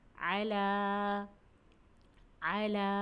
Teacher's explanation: عین کی ادائیگی کرتے ہوئے اس بات کا خاص خیال رکھیے کہ اسے حلق سے نکالیے، اور لام کو ہم نے پھر ایک الف کے برابر پڑھا کیونکہ لام پر کھڑا زبر ہے، اور کھڑے زبر کو ہمیں ایک الف کے برابر پڑھنا چاہیے۔